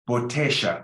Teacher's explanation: Botella, that's the one I teach, it's very universal. But you can also make the double L a sh sound, like in Argentina and some countries in South America. Botella, there's two options.